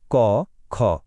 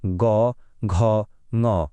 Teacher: অঘোষ বর্ণগুলোর sound খুব হালকা, যেমন ক, খ। আর ঘোষ বর্ণগুলোর সাউন্ড বেশ ভারী, একটা গমগমে ভাব আছে